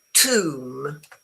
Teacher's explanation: The B is totally silent.